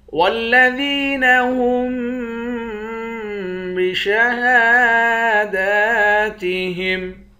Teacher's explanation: والذین هم بشہاداتہم، ذال کو یا کے ساتھ ملا کر ایک الف کے مقدار کھینچیں گے یا حروف مدہ ہے۔ ہا کو میم کے ساتھ ملا کر میم پر غنہ کریں گے۔